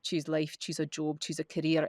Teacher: I sound much darker. I sound much uh heavier, deeper resonance. Nowhere near as much dynamic range.